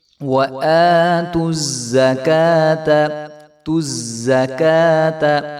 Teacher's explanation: حمزہ کے اوپر کھڑا زبر ہے تو اس کو ہم ایک الف کے برابر لمبا کریں گے